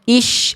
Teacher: Kalau jangan jadi huruf shin. Kalau huruf shin mah tengah lidah.